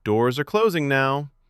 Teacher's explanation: The voice fell at the end, clear, certain, no debate. Falling intonation often signals a finished idea, a decision, or confidence.